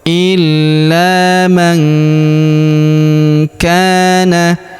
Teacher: Huruf nun sukun bertemu ka, maka nun sukunnya melebur ke huruf ka. Kita baca dengung dan samar. Dengungnya kita tahan 2 sampai 3 harokat.